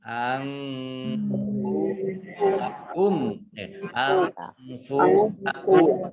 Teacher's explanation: Nun sukun bertemu dengan huruf fa ikhfa baca samar-samar